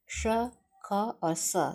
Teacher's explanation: श, ख और स जब बोलते हैं तो उसमें ऊष्मा निकलती प्रतीत होती है। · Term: उष्म व्यंजन